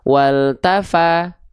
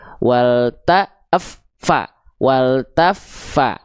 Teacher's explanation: F-nya tekan dulu, taf sampai mengalir nafas suara, taf baru lempar vokal A-nya. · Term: tasydid